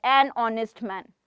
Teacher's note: Honest, when we say H sound is muted. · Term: mute sound of H